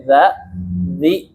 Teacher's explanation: kalau kita baca dza dzi itu jadi syiddah jadi kuat ya